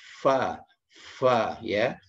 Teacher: bukan huruf P ya, tapi fa, dia harus keluar udara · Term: huruf fa